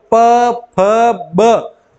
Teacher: ये ओष्ठ से ओष्ठ स्पर्श होते हैं, ओष्ठ से ओष्ठ स्पर्श।